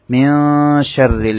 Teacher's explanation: হচ্ছে শিন শিন এসেছে সে কারণে নুনটাকে গুন্না করে পড়তে হবে মিন শাররিল র মধ্যে জের হওয়ার কারণে রটা বারিক হবে · হবে নুন সাকিনের ফারেফার 15টি হরফ থেকে একটি হরফ হচ্ছে শিন শিন এসেছে সে কারণে নুনটাকে গুন্না করে পড়তে হবে